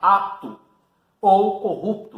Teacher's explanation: Você percebe que esse P ele não tem força suficiente para constituir uma sílaba. Então, esse P aí vai fazer parte da sílaba anterior, daquela sílaba que já tem uma vogal. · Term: consoante muda